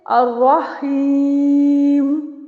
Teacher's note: متحرک میم پہ وقتی طور پہ سکون لے آئے ہیں وقف کی صورت میں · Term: سکون عارضی